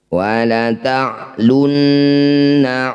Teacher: Nun baca dengung ya. Wa la ta'lunna, dengungnya 2 harokat atau 2 ketukan. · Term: gunnah musyaddadah